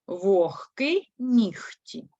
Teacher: лише г перед глухими вимовляють як х